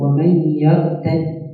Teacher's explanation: The dal, irtadda, in the one word has two dal. So you combine the two dal and you pronounce it with a shadda. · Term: idgham